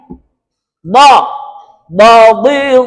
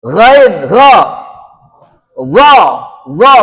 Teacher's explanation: Lek enggak terangkat salah kamu baca. Pangkal lidahnya kan terangkat ke langit-langit. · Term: istila